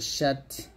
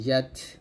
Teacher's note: জিম শিন ইয়া জিহ্বার মধ্যখান তার বরাবর উপরে তলের সঙ্গে লাগাবেন